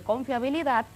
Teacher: si la palabra tiene la fuerza o la sílaba tónica en la última, como en el caso de confiabilidad, es aguda